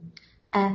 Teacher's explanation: അ ഹംസ തൊണ്ടയുടെ താഴെ അറ്റത്തുനിന്ന് വായയിൽ നിന്നുള്ള അ ഫത്ത് ആയതുകൊണ്ട് വായ തുറന്നു വെച്ച അവസ്ഥ അക്ഷരത്തെ ചിരിക്കരുത്